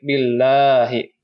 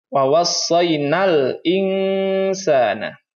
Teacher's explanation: Pada lafaz al-insana, ya, di sini ada nun sukun bertemu dengan sin, hukumnya ikhfa. Adapun di sini ada alif lam bertemu dengan huruf alif, maka dibacanya alif lam qamariyah.